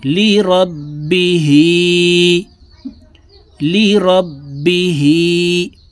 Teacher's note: বা জের বি, হা খারা জের হি, হার নিচে খারা জের আছে, নিচের দিকে ধাবিত করে এক আলিফ টেনে পড়ব।